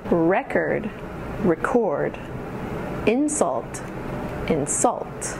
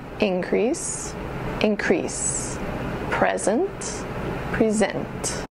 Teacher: The nouns have emphasis on the first syllable, and the verbs have emphasis on the second syllable.